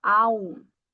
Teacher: quando eu tenho uma AM no final, só no final, o som vai ser um ditongo nasal